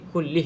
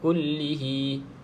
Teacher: Kalau kita sambung baru ha ni panjang. Kalau tak, matikan saja huruf ha.